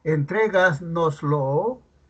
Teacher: Y si dijéramos la palabra entregas, entrégasnoslo, entonces, ¿dónde está el acento? No está en la última, no en la penúltima, ni tampoco en la antepenúltima, sino en la trasantepenúltima sílaba. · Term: sobresdrújula